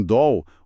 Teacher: O L no final de sílaba inglês, tem essa qualidade mais escura, diferente do nosso L, que vira som de U